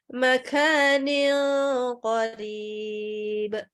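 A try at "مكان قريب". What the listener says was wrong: Ini kafnya kelebihan hamsnya. Ya, jadi masih kayak bule.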